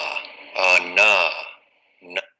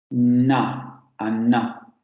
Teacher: bloqueo en la zona alveolar, el aire sale por las fosas nasales y vibración de cuerdas vocales